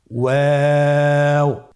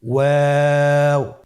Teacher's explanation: 2 ঠোঁট গোল করে মাঝখানে ফাঁক রেখে হরফটি উচ্চারণ করতে হবে।